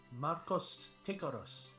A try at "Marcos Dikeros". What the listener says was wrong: No, with a D, with Dikeros. Dikeros. Marcos Dikeros, like this.